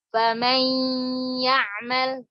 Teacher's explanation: Dari sifat nunnya ini jangan dihilangkan gunnahnya. Karena dia idgham bi gunnah namanya juga, bukan idgham bi ghairi gunnah, ya enggak? · Famay 50% ke makhraj, 50% ke khayshum.